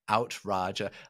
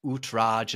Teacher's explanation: it turned into an ow sound instead of an oo sound